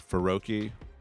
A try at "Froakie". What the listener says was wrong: just FR. It's not FUR. It's not Faroki. It's Froakie.